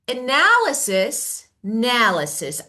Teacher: So the stress is on the second part.